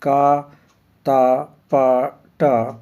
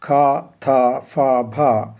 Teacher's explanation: अल्प प्राण ध्वनियां है का त प ट महाप्राण ध्वनियां है ख था फ भा